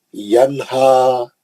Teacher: نون ساکن کا اظہار حلقی حرف دو چشمیاں، ینہا بولے تو غلط ہے، کبھی غنہ نہیں کرنا اس کا